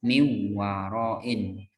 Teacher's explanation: Nunnya hilang. Jadi wawnya kayak bertasjid. Ya. Itu namanya melebur.